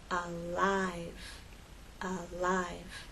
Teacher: sounds one before and one after you say a for alive make the L with the tip of your tongue against the bump and as you move into I you need to drop your tongue and make the full I sound